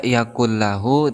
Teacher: idgham bilagunnah artinya idgham itu memasukkan bilalhunnah artinya dengan tidak dengung berarti kita membaca yaqullahu tidak boleh didengungkan maka harus secara langsung